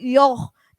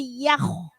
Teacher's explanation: Yakh, ya. Ya ucapkan dulu, selesaikan dulu dia huruf tipis, jangan sampai yoh, tapi yakh. Yakh. Nah, jadi tipis baru ke tebal.